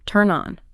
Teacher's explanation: the N sound at the end of turn just slides right over. It provides a runway for the O. It effectively creates a brand new two-syllable word, turn on.